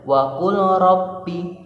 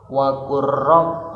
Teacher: Nah, lam bertemu ro, tidak boleh wa qul rabbi, langsung wa qur rabb, langsung masuk tasdid, idgham berarti tasdid ke huruf ro, lamnya lebur. Wa qur rabbirhamhuma kama rabbayani shaghira, ya.